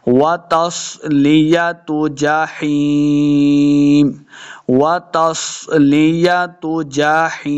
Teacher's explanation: हाज़िर याही, यह मद्दा इसको दो हरकत लम्हा करना है और आखिर पे वक़फ़ करेंगे तो मीम साकिन हो जाएगा।